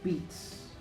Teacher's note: There's one more affricate, which is TS in words such as beats.